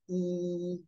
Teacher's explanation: the sound e which is a very closed mouth sound